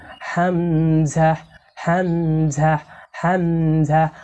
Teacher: হামজা অক্ষর কন্ঠনালীর শুরু থেকে শক্ত করে পড়তে হয়।